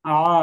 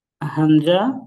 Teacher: এই আইনটা হচ্ছে আমাদের কন্ঠের এর মধ্যকান আর এই হামজা হচ্ছে আমাদের কণ্ঠনালীর শুরু